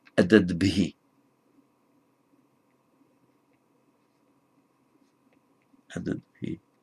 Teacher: what would otherwise be the final T, changes to a D because it's followed by the voiced consonant ending b